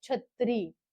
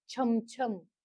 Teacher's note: छ म्हणजे तालव्य उच्चार आहे छ बट दंततालव्य उच्चार नाहीय